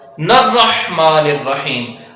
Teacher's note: اب آگے یہ نون را کے ساتھ ڈائریکٹلی مل جائے گا